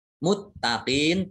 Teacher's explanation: Muttaqin, taknya dibaca double, ada tasdidnya